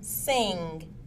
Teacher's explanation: Ng is made using the tongue, roof of the mouth, and nasal passage. It is a nasal sound and is voiced. The vocal cords vibrate.